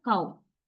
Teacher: Sliding from open low level to high close level.